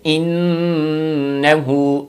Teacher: تھوڑا سا ناک کے اندر نون کی آواز کو لے جائیں اور اس کو تھوڑا سا کھینچ دیں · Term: غنہ